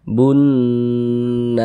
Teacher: Di bagian bunnya itu kita kita tahan kita panjangkan sejenak. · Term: didengungkan